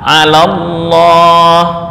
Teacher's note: Hamzah wasol kemarin sudah dijelaskan, hamzah yang jika berada di tengah kata maka hamzah tersebut nggak berbunyi, tapi jika berada di awal kata hamzah tersebut bunyi.